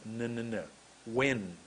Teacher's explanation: my tongue went behind my top teeth